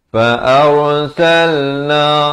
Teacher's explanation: Fa'arsalna, ra dibaca tebal